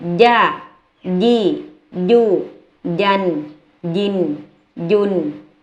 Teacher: ตัวอักษรยินเนี่ยเวลาออกเสียงนะคะให้เอากลางลิ้นเนี่ยไปจรดกับเพดานปากด้านบนแล้วกดลิ้นด้วย